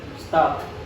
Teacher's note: Jadi P-nya itu yang di akhir itu ada angin yang keluar.